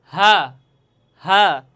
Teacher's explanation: আর এই হাফটি উচ্চারণ হবে হলকের শুরু হতে। হলকের শুরু হতে এই হাটি উচ্চারণ হবে।